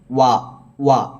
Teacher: വാവിന്റെ മഹറജ് രണ്ടു ചുണ്ടുകളും മുൻവശത്തേക്ക് കൊണ്ടുവന്നിട്ടാണ് വ എന്ന് ഈ താഴ്ഭാഗത്തെ ചുണ്ടും മേൽഭാഗത്തെ പല്ലും തമ്മിൽ മുട്ടിച്ചിട്ട് വാവ് ഉച്ചരിക്കരുത്